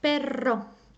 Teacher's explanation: it may sound very strongly as in your tongue goes up and down very quickly